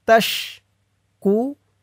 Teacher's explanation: ওয়াকফ করার কারণে পেশের পরে ওয়াও সাকিন এক আলিফ টান 3 আলিফ টান হয়ে গেছে।